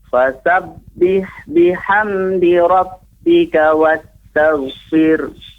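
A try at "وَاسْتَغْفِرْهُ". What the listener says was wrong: Wastaghfir. Ada huruf H-nya di akhir.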